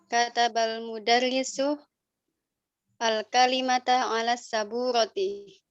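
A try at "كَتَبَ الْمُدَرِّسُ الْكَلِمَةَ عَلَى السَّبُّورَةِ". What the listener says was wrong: Ahsan.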